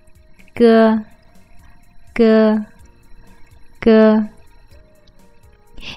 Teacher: When you say go, you are forming the sound with your soft palate.